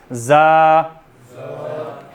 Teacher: ज़ा के अंदर सख्ती है, ठीक है, ज़ा, लेकिन इसको मोटा नहीं करेंगे, ज़ौ नहीं पढ़ेंगे